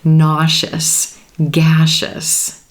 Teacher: the letter s right before the suffix is blending with that e and becoming the sh